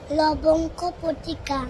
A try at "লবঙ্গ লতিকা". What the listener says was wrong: পতিকা না, লবঙ্গ লতিকা।